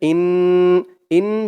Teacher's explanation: মুশরিকিন পরের আয়াত ইন্না হামজা দিয়ে নুন জরবে হামজা নুন জের ইন ইন বলে গুন্নাহ করতে হবে ওয়াজিব গুন্নাহ হরকতের পরে নুনের উপরে তাসদিদ